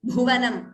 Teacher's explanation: Bha is also Mahaprana.